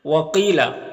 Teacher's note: قاف حروف مستعلیہ میں سے ہے تو اسے پر پڑھیں گے۔ یہاں پر یا ساکن سے پہلے قاف کے نیچے زیر ہے تو یا مدہ ہوگا، اسے ایک الف کے برابر کھینچ کر پڑھیں۔